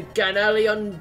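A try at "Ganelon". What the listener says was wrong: You keep sticking an extra syllable in there.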